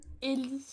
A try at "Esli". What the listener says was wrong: vraiment le pseudo en entier, les gens ne prononcent pas le S.